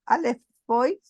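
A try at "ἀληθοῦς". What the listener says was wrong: recuerda un detallito, perdóname, que ese dictongo o U, que estoy subrayándolo con azul, se lee como una U, Alefus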